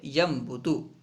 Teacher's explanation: دیکھیے ینبتو میں نون ساکن کے بعد با ایک ہی کلمے میں ہے، تو یہاں پہ نون ساکن کو میم سے بدل کر پڑھیں گے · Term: اقلاب